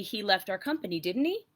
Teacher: So, or it could be, "He left our company, didn't he?" Because you're inquiring, you're curious, you want an answer to that statement. So it's with the rising intonation, it implies questions.